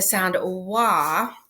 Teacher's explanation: If you think about the sound wa, the a becomes more rounded and it sounds more like, what we would think of as a short o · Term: co-articulation